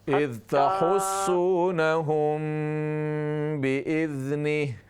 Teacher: मीम साकिन के बाद जब बा हो तो वहाँ पर इख्फा करते हैं